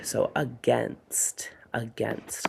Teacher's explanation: So we have that schwa at the beginning, and the A-I spells that again instead of that long A like we would like.